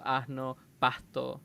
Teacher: tiene un sonido muy similar Si no idéntico al de la H inglesa que es básicamente exhalar aire por eso se le llama una aspiración